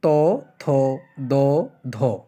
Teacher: জীবের সামনের অংশ এবং উপরের পাটিদাতের স্পর্শে যে ধ্বনিগুলো উচ্চারণ হয় সেগুলোকে দন্ত ধ্বনি বলা হয়